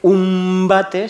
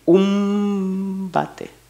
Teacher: si tú paras el tiempo en esa nasal, es una M.